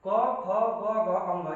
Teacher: यानी पहला दूसरा अघोष हो गया और तीसरा चौथा पांचवा घोष हो गया।